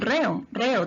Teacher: tienes una vocal abierta con otra vocal abierta estas se separan forman dos sílabas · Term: hiato